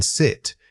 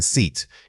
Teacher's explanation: When you say the long vowel like in seat, you need to stretch that sound out, keeping your lips spread into a wide smile. The key difference isn't just length, it's tension.